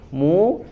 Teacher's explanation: mu-nya tipis, ya, huruf mu tipis tapi monyong